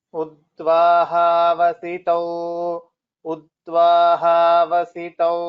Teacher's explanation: Avasitau, and there is no Mahaprana. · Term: Alpa Prana